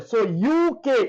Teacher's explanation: It has to sound like a vowel. So UK, it pronounces like a consonant, which is ya. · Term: consonant sound